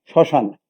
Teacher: এখানে আরেকটি বিষয় লক্ষণীয়, যখন কোনো বর্ণে মফলা থাকে লিখার ক্ষেত্রে এবং যখন উচ্চারণ করি তখন এই মফলাটা সেই উচ্চারণের ক্ষেত্রে চন্দ্রবিন্দু হয়ে যায়, মফলাটা বিলুপ্ত হয়ে উচ্চারণের সময় সেখানে চন্দ্রবিন্দু হয়, অর্থাৎ নাসিক্য রূপ লাভ করে। · শব্দের প্রথমে যদি মফলা থাকলে তাহলে উচ্চারণ হয় না। যেমন একটি শব্দ আমি বলি শ্মশান, তাহলে বা শয় মফলা, তাহলে বা শয় আকার দন্তান্ন, কিন্তু উচ্চারণটা যখন লিখবো তখন তালিবা শয়ের সাথে মফলা হবে না।